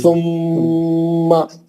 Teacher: मा बोल के नहीं खींचना, सुम्मा, बस एक हरकत